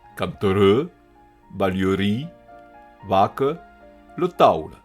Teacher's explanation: en final, qu'a eu sonoritat en E atona, ací representat per un E inversat en API